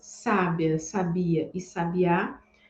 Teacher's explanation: percebe que nada além do acento em cada uma das sílabas é que vai trocar o significado de cada uma dessas palavras